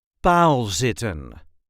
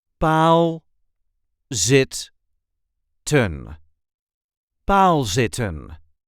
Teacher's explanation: There is a light emphasis on the first syllable.